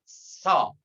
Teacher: Huruf shad, lidah kita atau lisan kita ditempel ke gigi yang bawah atau ke gusi yang bawah. S diangkat, fathah, so.